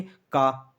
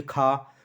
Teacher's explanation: जैसे आप दोस्तों का बोलेंगे, का बोलने पर मुख से कम हवा निकल रही है, अब खा बोलेंगे तो उससे ज़्यादा हवा निकल रही है